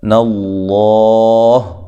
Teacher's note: ہے، بیم نون تنوین کا یہاں ادغام مع الغنہ ہے، ناللہ لفظ اللہ کو موٹا پڑھنا ہے، اس سے پہلے حرف پر زبر آ گئی ہے